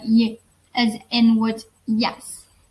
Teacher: palatal, which is articulated by raising the front of our tongue towards the hard palate